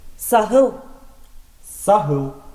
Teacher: Буква «х» похож на легкий смех или покашливание.